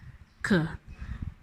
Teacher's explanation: k, pronounced with the back of the tongue